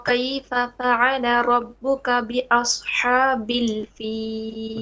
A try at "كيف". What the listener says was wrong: Okay, what's your kaf? Okay, make it more light, flat, subtle. Kayfa, because you're saying kayfa, a bit of a qaf in it. Alam tara كيف كيف كيف حالك كيف. Okay, not كيف. Don't press on it. كيف. ألم ترى كيف.